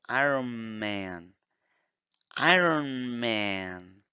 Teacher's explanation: Iron Man, muchas personas no dicen Iron Man. El Iron, la N con la M, luego se vuelve uno solo. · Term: liaison